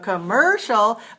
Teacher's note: commercial which is also three syllables but it stress on the second syllable then the first syllable is weak commercial but for